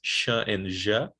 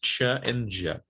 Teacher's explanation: We have two palatal fricatives, sh and ja, and the two affricates, ch and ja, okay? In the IPA, these two fricatives are called post-alveolar, and the affricates are called palatal alveolar, all right?